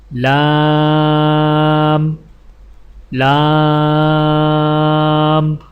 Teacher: زبان کے باریک کنارے کو اوپر والے دانتوں کے مسوڑوں سے لگا کر باریک آواز میں پڑھیں